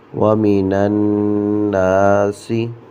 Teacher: نون مشدد ہے، اس کی شد کو ظاہر کرنا ہے اور یہاں پر غنہ کریں گے